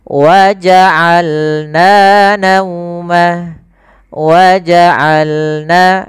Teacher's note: Dari tengah tenggorokan kita lafalkan ain.